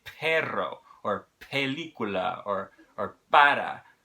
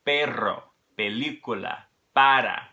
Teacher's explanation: But if you can learn to separate your aspirated P's from your unaspirated P's, and then only use the unaspirated P's when speaking in Spanish, even when it comes at the beginning of the word, you're going to sound more natural.